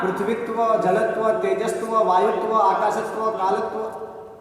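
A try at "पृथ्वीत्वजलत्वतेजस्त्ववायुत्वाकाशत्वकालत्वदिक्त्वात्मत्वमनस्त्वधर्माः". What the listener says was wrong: तोड़ दिया।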